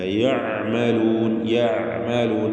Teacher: ഐന് വ്യക്തമായി മഖ്റജിൽ നിന്ന് മൊഴിയണം. ഐനിന് തവസ്സുത്ത് എന്ന സിഫത്തുണ്ട്.